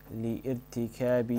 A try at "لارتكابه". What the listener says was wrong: ألف الوصل لارتكابه you don't pronounce it